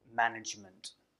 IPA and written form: ˈmænɪdʒmənt (management)